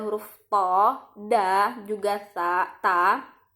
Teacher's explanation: to, da, juga ta ini makhrajnya ada di ujung lidah ya, bertemu dengan gusi atas